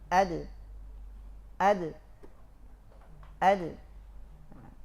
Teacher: Tidak tebal, tapi dia tipis, mengikuti sifat dasar pada dal, dia istifal. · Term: qalqalah